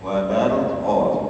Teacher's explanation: Dua-duanya harus dibaca, ra sukun harus terbaca, qaf sukunnya juga harus terbaca. Apalagi kalau qaf sangat kentara, ya. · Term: mensukunkan dua huruf sekaligus